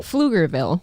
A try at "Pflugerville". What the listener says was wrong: You don't pronounce the P? The P is silent? Pflugerville.